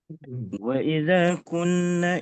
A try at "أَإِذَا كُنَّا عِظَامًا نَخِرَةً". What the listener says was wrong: A'iza bukan wa. Afwan, Ustaz